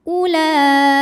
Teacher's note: Walaupun berdiri setelah hamzah yang berharokat dhammah, ini tidak dibaca panjang. U-nya tetap pendek ya. Ula ini bukan waw mad, bukan mad badal.